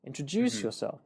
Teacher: You've got not only a rising falling pattern, introduce yourself, but you've also got a stressed word there, which is introduce, and then it's one of the syllables within that word, juice